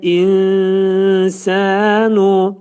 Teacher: İnsan kəlməsində ixva gördüyünüz kimi nun sin hərfinə yetişir və nunun 1/3 hissəsi sin hərfinin məxrəcində gizlədilir. Sin hərfinin məxrəci də Azərbaycan dilində necə s hərfin deyir isə, ərəblər də həmin o cür deyir.